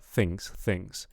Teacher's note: I'm kind of hearing the top teeth on the bottom lip, but I want the tongue between the teeth